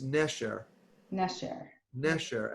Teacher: Accent on the second to last